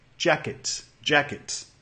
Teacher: Notamos que el estrés cae en la primera sílaba. Ya. Y la segunda sílaba más corto.